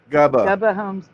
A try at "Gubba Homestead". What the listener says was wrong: Gubba with a U. Gubba Homestead.